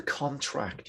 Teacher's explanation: there's the noun stress on the con